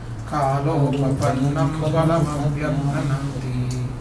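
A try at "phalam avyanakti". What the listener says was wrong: It's not avyaktananti, it's avyanakti.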